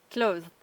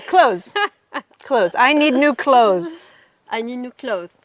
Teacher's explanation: So in clothes, it's such a soft TH that you really don't hear it.